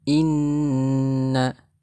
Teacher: Hukum bacaannya ghunnah karena ada nun yang bertasydid.